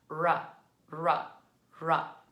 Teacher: when we do our R, we tend to take our tongue and kind of curl it back towards our gum ridge. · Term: R sound